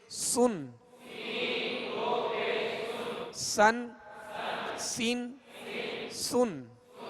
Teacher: اس کو باریک پڑھیں گے اور سیٹی کی آواز میں پڑھیں گے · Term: سین